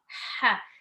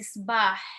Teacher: Ha is voiceless. Ha is longer, so it's not stop. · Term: ha sound